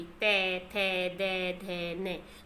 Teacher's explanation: इसमें हमारी जीवा, हमारी जो जीभ है वो किसको छू रही है, दंत को छू रही है। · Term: स्पर्श व्यंजन